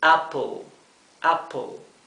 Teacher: entre la P y la L no se siente una E. La letra E es muda.